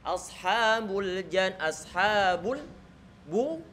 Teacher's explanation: Baknya didommahkan, maka kita monyongkan. Kemudian lam yang jatuh setelah huruf ba disukunkan.